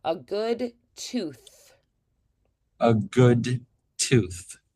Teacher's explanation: That helps us to identify that because the T is very short and crisp and clean. So that tooth extending and having a little bit of a longer hissy sound helps us to identify it as a listener. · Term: TH sound, th sound